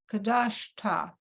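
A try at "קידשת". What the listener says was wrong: Almost, except the single dot is the E. So let's remember that it's ki dash ta.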